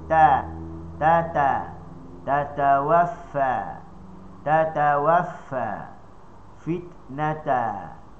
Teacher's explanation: contoh huruf ta hujung lidah digusi